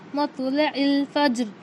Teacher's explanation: ज़ेर पर वफ़ करना है तो जज़म लगाकर सांस तोड़ेंगे, यानी साकिन कर देंगे। रॉय साकिना से पहले जज़म, जज़म से पहले ज़बर, तो हम रॉ को मोटा पढ़ें